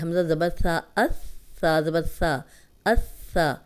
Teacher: اوپر سامنے کے جو دو دانت ہیں اندرونی کنارے پہ زبان رکھ کے ادا کریں گے تو سیٹی کی آواز نہیں آئے گی